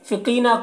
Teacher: منافقین نون میں کھڑا زبر ہے، کھڑا زبر الف مدہ کی طرح ہوتا ہے تو اسے ایک الف کے برابر کھینچیں گے۔ فقینہ قوف کو پور پڑھیں گے، یہ حروف مستعلیہ میں سے ہے۔ یہاں پر یا مدہ ہے تو قی کو ایک الف کے برابر کھینچیں گے